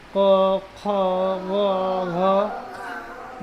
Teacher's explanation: तो ये साउंड कहां से आ रहा है? कंठ से ही आ रहा है